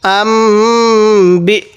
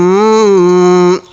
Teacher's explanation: মিমে সাকিনের পরে যখন দেখব বা আছে তখন সেখানে আমরা গুন্না করব